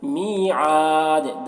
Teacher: دال میں قلقلہ کریں گے کیونکہ وقف کی وجہ سے دال کا زبر جو ہے وہ سکون سے بدل جائے گا